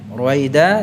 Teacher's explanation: Ruwaida danya 2 harakat saja ya. Walaupun itu di akhir surat.